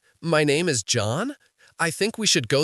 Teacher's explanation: He uses the uptalk. He finishes every sentence with a rising pitch like he's asking a question.